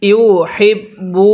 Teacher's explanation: দেখুন এই হাটা উচ্চারণের সময় মুখে হালকা বাতাস বের করতে হবে।